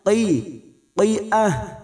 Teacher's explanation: Qaf lagi yang berharakat kasrah. Huruf qaf adalah huruf isti'la, huruf tebal, maka membunyikannya qi, qi'ah.